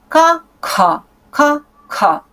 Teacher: Ка, ка, ка, ка. Это ка с выдохом. Придыхательное. Мы будем называть их придыхательный звук.